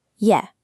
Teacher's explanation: In rapid spoken Quebecois, il est often reduces to a single sound. Yeah. The phrase becomes yet amusant. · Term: reduction of third-person pronouns